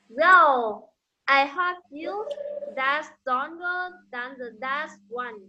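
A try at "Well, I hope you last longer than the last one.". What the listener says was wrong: Okay, your L sound. Well, I hope that will last longer than the last one. Pay attention to your L sound. L. Okay, last longer than the last one.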